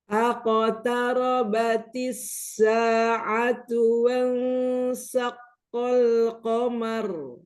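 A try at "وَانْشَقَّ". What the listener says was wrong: Nah, pakai shin. Wansyaqqal qamaru.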